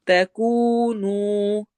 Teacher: ولا الف مدہ، تکونوا واو مدہ، دونوں ایک جیسے لمبے ہونے چاہیے